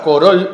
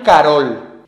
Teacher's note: en la lengua rusa moderna, la O átona se pronuncia como A. De este modo, la palabra rusa korol se transforma en Carol.